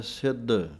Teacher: ਆਖ ਹੈ ਈਸਰ, ਆਖ ਹੈ ਸਿੱਧ, ਪਾਠ ਪੜ੍ਹਨਾ ਹੈ ਸਿੱਧ, ਕੱਸ ਕੇ ਬੋਲਣਾ ਹੈ ਭਾਰਾ ਕਰਕੇ। ਧੱਦੇ ਦੀ ਆਵਾਜ਼ ਆਉਣੀ ਚਾਹੀਦੀ ਹੈ, ਦੱਦਾ ਬੋਲ ਕੇ ਸਿੱਧ ਪੋਲਾ ਜਿਹਾ ਨਹੀਂ ਪੜ੍ਹਨਾ